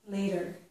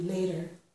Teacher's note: I'm making this T, a flap. It sounds like a D